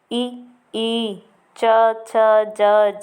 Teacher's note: वर्ण तालु से निकलते हैं। जिह्वा का तालु से स्पर्श करने से ही इन वर्णों का उच्चारण होता है। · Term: तालु से निर्गत वर्ण